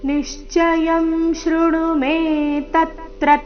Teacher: ತತ್ರ ನಲ್ಲಿ ತ್ರ ಮೇಲೆ ಕೂಡ ಆಘಾತ ಬರಬೇಕು